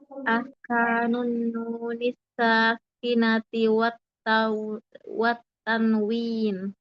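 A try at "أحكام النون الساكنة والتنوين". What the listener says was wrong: Nah, wat tanwini dibaca semua.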